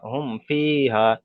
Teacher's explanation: তাহলে এখানে মিম সাকিনের পরে ফা এসছে, তাই মিম সাকিনকে বিনা গণ্যায় জাহির করে পড়তে হবে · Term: ইজহারে শাফাবি